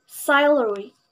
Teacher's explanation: This word has the main stress, or the primary stress, at the beginning of this word.